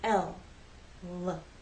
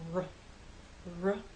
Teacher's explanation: with L the tongue makes contact with the hard bump behind your upper front teeth with r there is no contact with the tip of your tongue in any part of the roof of your mouth · with r there is no contact with the tip of your tongue in any part of the roof of your mouth the sides of your tongue are down forever L the sides